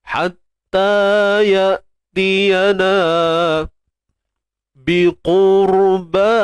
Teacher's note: Jadi bila sebelum ra ni, sebelum ra mati ni ada baris hadapan, maka ra ini perlu dibaca dengan tebal. Dengan mengangkat pangkal lidah lah untuk menghasilkan suara tebal.